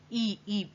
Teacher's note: मुख जो है वो आपका बहुत संकीर्ण रहता है, बहुत बंधा बंधा सा रहता है। ई बहुत बंधा हुआ है।